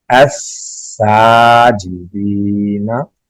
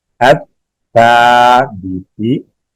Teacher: देखिए इसमें अत्ता और अस्सा फर्क करना है। सीन में सीटी की आवाज आए और ता में सीटी की आवाज ना आए